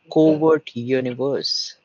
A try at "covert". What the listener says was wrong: I think the British pronunciation is covered. Covered no W there. Covered. Covered.